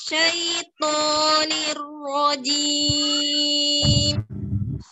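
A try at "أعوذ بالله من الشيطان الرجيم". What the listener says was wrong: Baik, nadanya jangan naik-naik ya. A'udzubillahi minasyaitonir rajim. Nadanya rendahin aja, lurusin aja. A'udzubillahi minasyaitonir rajim.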